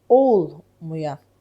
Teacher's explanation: İnkarlıq olduğu üçün vurğu birinci hecanın üzərinə düşəcək.